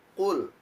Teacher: Fi'il amr atau kata perintah dari akala. Sedangkan huruf qaf itu sifatnya adalah syiddah, yakni dengan suara tertekan.